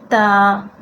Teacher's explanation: زبان کا کنارہ اور اوپر کے دانتوں کی جڑ، اوپر کے دانتوں کی جڑ آپ نے وہاں سے ادا کرنا ہے